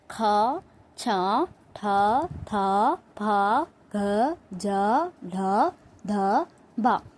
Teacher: ಮಹಾಪ್ರಾಣ ಅಕ್ಷರಗಳು ಏನು? ಹೆಚ್ಚು ಉಸಿರಿನಿಂದ ಉಚ್ಚರಿಸಲಾಗುವ ಅಕ್ಷರಗಳು.